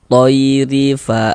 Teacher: Maka huruf ro ini dibaca tarkik, baca tipis.